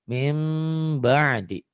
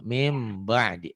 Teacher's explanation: Jangan M yang sempurna, M yang bindeng ya. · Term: Iklab